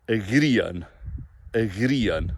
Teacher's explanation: IA is a diphthong, sliding vowel, very short.